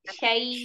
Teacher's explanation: Syainya jangan masuk hidung, sayang.